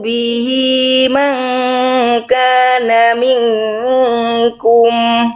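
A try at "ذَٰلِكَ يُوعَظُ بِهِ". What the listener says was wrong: Zu-nya berapa harokat zu-nya Bunda? Nih, Bunda tadi baca 2. yu'adzu bihi langsung harusnya yu'adzu bihi.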